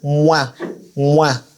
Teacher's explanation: when it comes to the waw, we do not close the lips